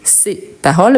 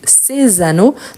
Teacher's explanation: par une voyelle ou pas et au pluriel c'est toujours c le s il apparaît seulement quand on fait la liaison